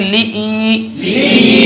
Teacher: لام نہیں کھینچیں گے، حمزہ کو کھینچیں گے. حمزہ کے ساتھ یا مدہ ہے.